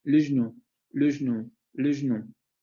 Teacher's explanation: Pero como la regla la desaparece, entonces genera una resilabificación de la estructura, porque esa consonante que pertenece a la segunda palabra pasa a formar parte de la sílaba de la primera palabra.